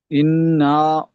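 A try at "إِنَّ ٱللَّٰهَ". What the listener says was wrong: ইন না নয়, নুনটি লামের সাথে যুক্ত হবে, লামের উপর তাজদিদ আছে আল্লাহ শব্দের উপরে। ইন্নাল। ইন্নাল ল, লাম খাড়া জাবার ল, খাড়া জাবার একের টান দিয়ে বলেন ইন্নাল্লাহা। ইন, নুন মুসাদ্দাদ ওয়াজিব গুন্না, একালিফ গুন্না করতে হবে, নুন তাজদিদ। ইন, নুন ওয়াও নেই। হামজা নুন জের ইন,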